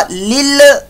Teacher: लाम को हिला नहीं देना, यानी इसमें कलकले वाली कंडीशन नहीं पैदा कर देनी।